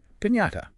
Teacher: Think of it as a smooth single sound, not just an N followed by a Y.